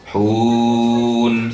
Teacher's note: Sempurnakan juga nunnya, jangan hum.